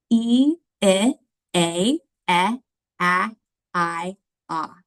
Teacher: if you would watch my mouth when I see these sounds it's going to start with a tight smile and then it's going to go down to that a sound where my mouth is the most wide and open and then back up the other side so watch my mouth